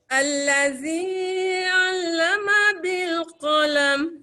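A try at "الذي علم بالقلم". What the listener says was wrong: Jangan lambat. Allazi 'allama bil qalam. Dia jangan naik dekat 'allama bil, lambat. Allazi 'al dekat ain kepada lam tu.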